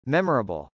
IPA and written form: mˈɛmɚəbəl (memorable)